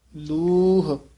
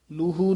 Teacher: ਬਿਨੁ ਹਉ ਆਨ ਨ ਜਾਨਉ ਦੁਤੀਆ ਭਾਉ ਸਭ ਲੂ ਲੂਹ >> ਧਿਆਨ ਨਾਲ ਇਹ ਸਾਰੇ ਪਦ ਲੂਹ ਇਸ ਤਰ੍ਹਾਂ ਬੋਲਣਾ ਲੂਹੂ ਨਹੀਂ ਕਹਿਣਾ